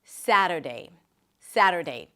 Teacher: Primary stress is on the first syllable.